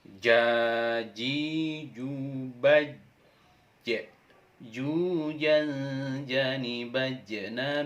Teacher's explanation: huruf ja cara melafalkannya adalah dengan menyentuhkan Tengah lidah ke langit-langit